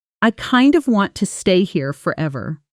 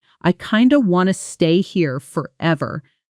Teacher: Listen to how kind of often becomes something closer to kinda in fast natural speech. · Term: connected speech